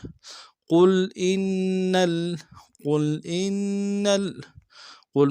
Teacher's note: قاف کو موٹا کریں گے، لام کے سامنے لانا ہے